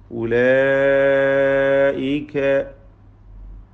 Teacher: മദ് മുത്തസിൽ വാജിബ് നൽകി ഈ പദത്തിലെ അലിഫിനെ ദീർഘിപ്പിക്കണം. അലിഫും ശേഷം ഹംസയും ഒറ്റ പദത്തിൽ ചേർന്ന് വന്നതാണ് ഇതിനുള്ള കാരണം.